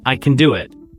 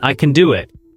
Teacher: Stress on can and do. The rest are quick again.